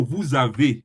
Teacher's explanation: So if you want to pronounce with a vowel, it change the S to Z.